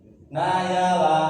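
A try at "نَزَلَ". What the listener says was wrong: Nah, ini bukan ya. Ya, jadi huruf ya sama zai memang makhrajnya itu ya. Huruf za sama ya memang makhrajnya sama, yaitu tengah lidah dengan langit-langit. Jadi bunyinya memang mirip tapi dia beda. Kalau za itu lebih menempel, gesekan lidah dengan langit itu lebih terasa. Langit-langit mulut lebih terasa. Jadi za, coba. Semuanya za. Nazala, nazala.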